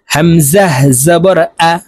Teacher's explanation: হামজা জবর আ, হলকের শুরু থেকে উচ্চারণ হবে।